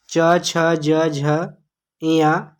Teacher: च वर्ग च छ ज झ इया, इसका उच्चारण स्थान तालु है